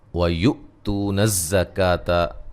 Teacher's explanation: گے، لا مد اصلی ہے، وَيُؤْتُونَ الزَّكَاةَ، تو و مدہ ہے، حمزہ کو جھٹکے سے ادا کریں گے، اور زا کو سیٹی سے